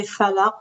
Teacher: the characteristic of the qaf is when it has sukoon, you have to bounce it, and you call it qalqala